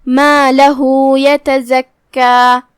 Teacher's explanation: مد صلہ صغرا تو ہم 2 حرف کی مقدار میں اپنی آواز لمبی کریں گے